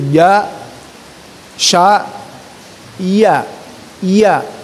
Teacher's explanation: Ja secara mahroz adalah tengah-tengah lidah, itu kan, bertemu dengan langit-langit atas. Ya. Masih lidah itu temukan dengan langit atas, ya.